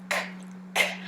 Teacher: so we call this one a tongue scraper tongue scraper because the back of the tongue goes up to the pallet and it scrapes the pallet just a little bit